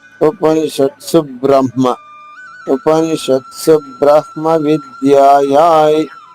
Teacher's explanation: బ్రహ్మ సంయుక్తాక్షరం అయినప్పటికీ ఆఘాతం ఉండదు